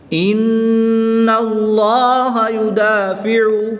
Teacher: لام کے اوپر کھڑی زبر ہے تو اس کے لیے اس کو لمبا کر کے پڑھیں گے۔ دال کے اوپر بھی کھڑی زبر ہے، اس کو ایک الف یعنی 2 حرکات کے برابر کھینچ کر پڑھیں گے